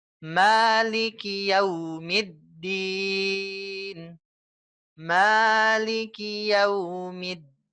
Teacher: hati-hati ya mimnya ini di yaumiddin biasanya ada yang panjang nih ada yang kepanjangan ingat Hanya dua harakat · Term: mad asli, 2 harokat